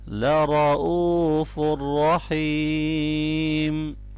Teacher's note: را کے اوپر زبر ہے اس لیے اس کو موٹا پڑھنا ہے